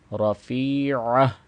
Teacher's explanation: تو اس کی صحیح ادائیگی کیا ہے؟ رفیعہ، گلے کے درمیان والے حصے سے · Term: عین